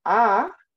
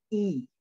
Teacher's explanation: very open vowels like ah down here and we have very closed vowels like e